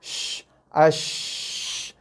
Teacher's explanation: Laluan udara yang keluar antara tengah lidah dengan ada langit atas. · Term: tafashi